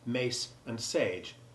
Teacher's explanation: lengthening the preceding vowel in words like mace and sage, which would otherwise be the different words mac and sag.